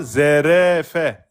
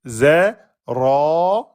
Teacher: J'amincis pas le ro. Je l'emphatise parce qu'il porte une fetha.